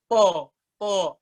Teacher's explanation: Suaranya kayak O di kuping kita ya, tanpa membulatkan bibir. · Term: isti'la